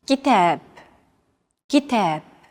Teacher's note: the second syllable is stressed it's pronounced longer and louder while the first and final syllables are shortened kitab if you